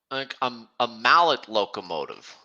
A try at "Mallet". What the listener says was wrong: Oh, I pronounce it Malay with a silent T at the end.